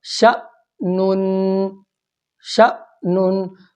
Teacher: شین کو الف کے ساتھ نہیں ملانا بلکہ حمزہ کے ساتھ ملانا ہے. اور الف والا جو بھی حرف ہوگا الف سے ملتا ہوگا اس کو لمبا کر کے پڑھتے ہیں. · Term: جھٹکے کے ساتھ